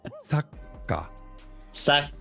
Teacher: Little pause and emphasis on the ka.